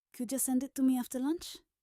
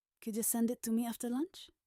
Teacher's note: To became weak. The important words are send me after lunch.